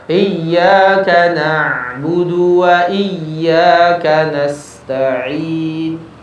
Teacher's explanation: Yang benar adalah huruf ain. Sebagiannya mengalir, sebagiannya tertahan.